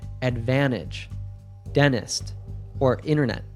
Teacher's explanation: when we have an N and T together, we usually drop the T sound